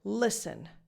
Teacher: the E in the second syllable is just a schwa.